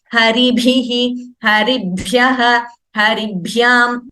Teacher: Mahaprana should be very, very clearly chanted.